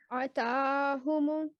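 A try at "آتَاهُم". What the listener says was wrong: آ کو بھی لمبا کیجئے کیونکہ اس کے اوپر فتح اشبائیہ ہے. آتاہم. نہیں آ کو بھی جتنا آپ لمبا کریں گے اتنا ہی تا کو، کیونکہ ان دونوں کے اوپر فتح اشبائیہ ہے.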